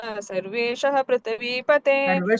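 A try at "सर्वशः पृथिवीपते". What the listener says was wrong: ಸರ್ವೇಶ ಇಲ್ಲ ಅಲ್ಲಿ, ಸರ್ವಶಃ ಪೃಥಿವೀಪತೆ.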